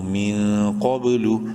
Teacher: ہوگا، قاف با زبر قب، قاف کو منہ بھر کے پڑھنا ہے اور با کے ساتھ ملاتے ہوئے یہاں پر قلقلہ کریں گے ، با حروف قلقلہ میں سے ہے اور ساکن ہے، لام